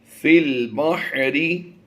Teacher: فا کو ڈائریکٹ لام سے ملانا ہے، یاد رہے یہ یا خالی ہے تو اسے ہم نہیں پڑھیں گے، اور الف کو بھی چھوڑ دیں گے